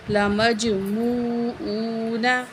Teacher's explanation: اس سے پہلے پیش ہے حروف مدہ، ایک الف کے برابر کھینچ کے پڑھیں گے دونوں واو کو